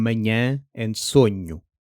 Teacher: Similarly, nh isn't n plus h. It's one nasalish palatal sound heard in manhã and sonho.